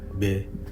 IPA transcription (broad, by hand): be